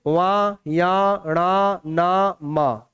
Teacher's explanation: ये जितने भी आपको दिख रहे हैं ना, ये सारे, ये सब के सब, क्योंकि ये हर वर्ग के 5वें नंबर पर हैं, और साथ में एक विशेषता इनमें और है कि ये सबके सब नाक से बोले जा रहे हैं